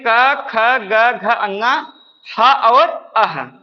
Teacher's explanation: क वर्ग में क ख ग घ अंग ह और अह ये सारे हमारे क्या है कंठ से बोलने जाने वाले